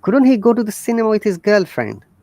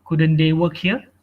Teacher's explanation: it is upper rising tone which means it's a question